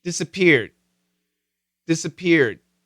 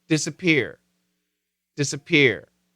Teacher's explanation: when we have the Ed there's a distinct stop and when there's no Ed it kind of flows to a finish